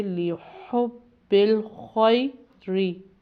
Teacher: وجہ یہ ہے کہ زبر ہے اور آگے یا ساکن آ رہی ہے، تو حروف لین کے رول سے اس کو ہم لمبا کر کے نہیں پڑھیں گے بلکہ سافٹ یا نرم پڑھیں گے